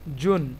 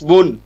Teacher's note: এখানে একটা কমন জিনিস দেখুন যে তানভিন, প্রত্যেকটা তানভিনের উচ্চারণ নুন সাকিনের মতোই হচ্ছে